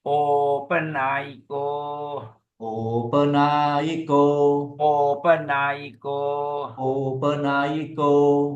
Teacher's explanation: O is long, A is short, I is short, O is long.